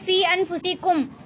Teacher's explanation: مد متصل اور مد منفصل کو دو اڑھائی الف یعنی 4 یا 5 حرکات کی مقدار تک کھینچ کر پڑھیں